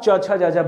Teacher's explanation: जब आपकी जीभ तालु को छूती है ना, तभी आप च छ ज झ बोलते हैं। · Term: तालु वर्ण